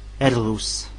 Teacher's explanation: R se prononce R, mais bien roulé.